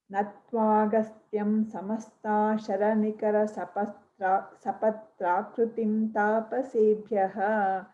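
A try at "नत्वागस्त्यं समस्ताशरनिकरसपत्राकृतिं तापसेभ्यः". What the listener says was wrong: There's a pause after Agastyam in the first line and Priyeshi in the second line.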